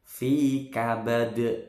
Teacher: Khalaqnal insana, nunnya nun sukun ini ketemu sin, bacaan ikhfa atau dibaca samar. Fi kabad, fi-nya panjang 2 ketukan, kabad qalqalah kubro.